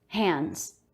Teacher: d after an n before a consonant in the word hands we usually won't say that d sound